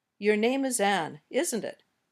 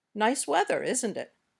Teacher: When we use falling intonation, we're saying, I already know the answer, but I'm just double checking. I'm pretty sure you'll say yes.